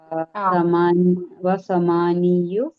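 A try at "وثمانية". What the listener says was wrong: സമാനിയേ സമാനിയേ സമാനിയെ പറഞ്ഞാ മതി, യു പറയണ്ട.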